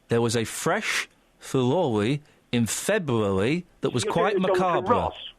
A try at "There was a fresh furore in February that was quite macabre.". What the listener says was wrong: You're doing a Jonathan Ross, which is an imitation of the Andalusian lisp.